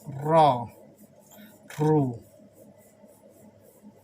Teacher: Sedang tebal ciri-cirinya di mulut agak monyong